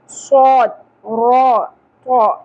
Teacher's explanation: صا را طا یہ تینوں حروف پر پڑھے جائیں گے